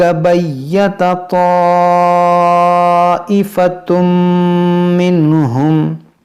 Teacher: ये मद मुत्तसिल है क्योंकि अलिफ मद्दा के बाद हमज़ा उसी कलमे में है